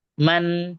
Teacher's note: maka bunyinya nun sukun harus jelas, tepat makhrajnya, dan ada dengungnya, tapi dengungnya dalam kategori nakis kurang ya, tidak penuh. Man, nah itu ya, bukan man, tapi man. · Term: idhar